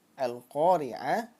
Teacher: Yang lam ada tanda sukun, kemudian lamnya dibaca jelas. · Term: Alif lam qamariyah